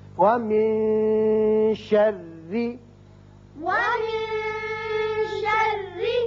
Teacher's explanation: یہاں نون کے بعد شین حروف اخفا میں سے ہے لہذا یہاں اخفا ہوگا۔ وَمِن شَرِّ، ومن شر اور را باریک بھی پڑھیں گے اس لیے کہ نیچے زیر ہے.